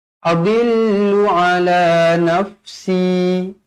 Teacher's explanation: si berhenti dua harakat.